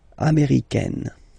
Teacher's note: it's really open, this AI